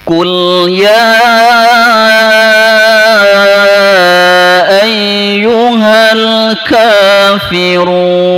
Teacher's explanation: Jangan sampai kul ya. Ya, jangan sampai terpantul lamnya, karena lam tidak termasuk huruf qalqalah. Kul ya, ditahan dulu lidahnya, kemudian pengucapan huruf berikutnya baru dilepas ya.